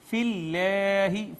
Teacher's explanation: اس کے بعد حرف مدہ الف آ گیا، اس کے بعد آپ دیکھیں اس میں جلالت ما قبل مکسور ہونے کی وجہ سے اس کو مرقق یعنی باریک کر کے پڑھیں گے